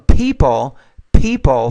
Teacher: you need to pronounce that P with more air